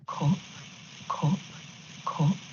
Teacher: here is a northern english person and you can hear their strut vowel